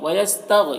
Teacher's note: یہاں پر غین کو پر پڑھیں گے، حروف مستعلیہ میں سے ہے